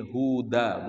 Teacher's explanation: huruf dal itu ya berada pada ujung lidah yang menempel ke gigi seri atas